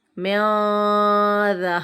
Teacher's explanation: یہاں پر نون ساکن کے بعد ذال آ رہا ہے، حرف اخفا کا ہے، تو یہاں پر اخفا ہوگا یعنی غنہ کریں گے